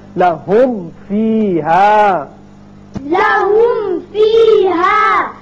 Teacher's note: آپ ہونٹوں کو ملائیں جب میم ادا کریں، ملا کے پھر آپ فا ادا کیجئے، ہونٹ ملے تو میم ادا ہوا، اور فا کا جو مخرج ہے وہ ہے اوپر والے جو دانت ہیں وہ نیچے ہونٹ سے لگیں گے، تب فا ادا ہوگا۔ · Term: میم کا اظہار